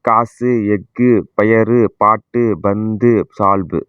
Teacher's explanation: ஒரு மாத்திரை அந்த அளவில் இருந்து அரை மாத்திரையா ஒலிக்குது இல்லையா, இதுதான் குற்றிய லுகரம்.